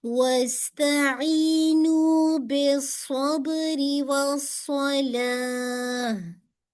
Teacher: ई को भी टू count और नू को भी टू काउंट